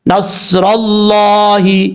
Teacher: لفظ اللہ سے پہلے زبر ہے، اس لیے لفظ اللہ کو پر پڑھا جائے گا